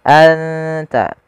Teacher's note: warna biru nunnya menandakan dia bacaan Ikhfa Bagaimana cara membaca ikhfa cara membacanya adalah suara nunnya disamarkan ke huruf ta